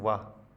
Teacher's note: जो ऊपर वाले दांत हैं वो नीचे वाले होठों को छूते हैं, और ज़्यादा ज़ोर से न छू लेंगे, दांत होठ ही कट जाए। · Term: दंत ओष्ठ